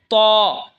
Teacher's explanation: ত জিহ্বার আগা সামনের ওপরের দুই দাঁতের আগার সঙ্গে লাগায় উচ্চারণ হবে ত। এই তা যেখান থেকে উচ্চারণ হয়েছে এই দালও সেখান থেকে উচ্চারণ হবে এবং তও সেখান থেকে উচ্চারণ হবে।